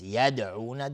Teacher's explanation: یدعون دال قلقله میخواد